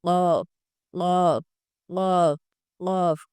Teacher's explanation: یہ جو ہمارے گلے کے اندر جس کو ہم کوا بولتے ہیں، اس کو جب حلق کے ساتھ ٹچ کیا جائے تو یہ آواز نکلتی ہے